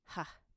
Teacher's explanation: Our final consonant sound, H, ha, pronounced very deep in the throat.